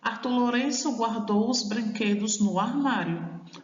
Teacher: A gente fala a palavra de, a monossílaba de, com pouca intensidade. Então, ela é uma monossílaba átona.